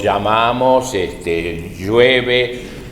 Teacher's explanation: nosotros como no pronunciamos la L, entonces decimos llamamos, llueve